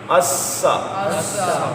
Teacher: سین میں سیٹی ہے حروف صفیریہ میں شامل ہے